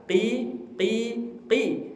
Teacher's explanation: Ihdinas siratal mustaqim, pakai huruf qaf, makharijul hurufnya dari tenggorok, dari pangkal lidah ke langit-langit yang lunak.